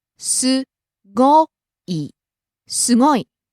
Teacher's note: Rising on the second syllable go and coming down on the last syllable i.